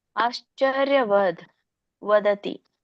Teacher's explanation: ವದ ಅನ್ನಂಗಿಲ್ಲ, ವದ್ ವ್ಯಂಜನ ಇದೆ